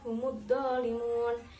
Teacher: Yang terakhir pada lafadz humudzalimun itu adalah bacaan mad arid lisukun karena ada mad bertemu dengan huruf hidup yang dibaca waqaf, panjangnya 1, 2, 3 alif